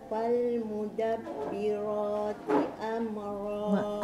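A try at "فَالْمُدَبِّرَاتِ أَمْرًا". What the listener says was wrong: Amma tak nak sebab mim bukan qalqalah kan. Okey, makcik tengok mulut saya. Fal, buka rahang untuk sebut lam. Fal kan. Fal mudabbirati amra. Dengan fal makcik tarik tepi ni. Fal mudabbira tak buka rahang tak boleh, kena buka rahang.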